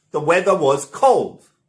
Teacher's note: i should stress weather and i should stress cold